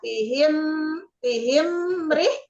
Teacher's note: Jadi di mim sukun bertemu ro-nya ditahan dulu, mat idhar sapawi dibaca jelas. Ila pihim, tahan dulu, mengkemkan dulu ininya, mulutnya.